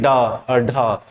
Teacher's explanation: ड और ढ इनको बोलते हुए मुंह की जीभ जो है ना एकदम तेजी से फेंकी जाती है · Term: फ्लैप